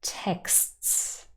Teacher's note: here we have four consonants next to one another without a vowel in between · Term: final consonant cluster